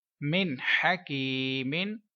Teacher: या साकिन से पहले जेर है तो या मद्दा का रूल बना, इसलिए 1 सेकंड तक लंबा करके पढ़ेंगे। मीम नून जेर मिन, हा जबर हा, काफ या जेर की, हकी, मीम दो जेर मिन, हकीमिन, मिन हकीमिन।